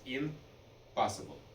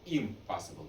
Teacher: the N in a lot of words changed to an M sound. For example, in the word like impossible, we used to pronounce it as impossible.